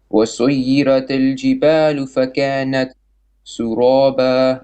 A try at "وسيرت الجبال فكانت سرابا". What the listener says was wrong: Not suraba. First of all, وسير, ra more heavy. وسيرت الجبال فكانت, okay, and then سرابا. Not سرابا, sin is flat. سرا.